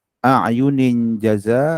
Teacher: dengung masuk ke dalam jim 2 harakat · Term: Ikhfa haqiqi